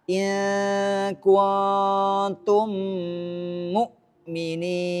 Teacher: memasukkan mim sukun ke huruf mim yang berharakat setelahnya dengan menjadi satu huruf yang bertasydid disertai dengan dengung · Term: idgham mutamatsil